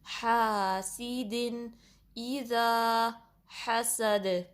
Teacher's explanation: یہ جو ہا ہے یہ بھی درمیانے حلق کے حصے سے نکلے گا، اس کو گول ہا جیسے نہیں پڑھنا. جو گول ہا ہے وہ حلق کے ڈیپسٹ پارٹ سے نکلتا ہے.